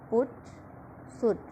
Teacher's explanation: short high back rounded